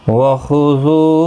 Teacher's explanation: वख़ुज़ू ज़ू वाव मद्दा है, खा हुरूफ मुस्तालिया है, पुर पढ़ा जाएगा